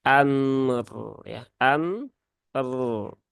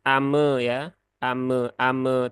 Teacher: ro yang sukun karena dia berhubungan dengan harakat Fathah di huruf hamzah maka rnya di sukunkan dan dibaca dengan tafkhim ya dengan tebal